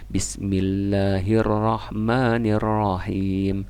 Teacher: Karena tasjid jadi 4, bergetarnya kurang lebih 4 kali.